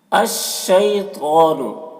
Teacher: تو کو پر پڑھیں گے کیونکہ تو حروف مستعلیہ میں سے ہے